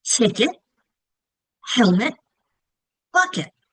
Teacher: They're all two syllables, right? But they also all end with the it sound